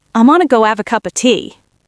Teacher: You used a glottal stop on the word have, erasing the H, turning it into av. You blended cup of into cuppa, and you used another glottal stop somewhere near the T.